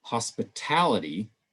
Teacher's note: now we've shifted the stress to the end of the word